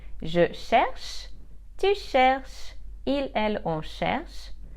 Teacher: because the ending for je, tu, il, elle, on, il and elle are silent, what I pronounce is the part of the infinitive minus er.